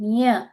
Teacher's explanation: అలా చదవండి. ఈ లెటర్ ఇలా చదవాలి య ఓకే సో య ఏమైందది యకు యవత్తులాగా అయిపోయి అనునాసికం కూడా వచ్చింది